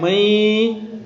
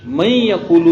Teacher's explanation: ناک میں آواز جا رہی ہے ایک الف کے بقدر وہاں رہتی ہے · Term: غنہ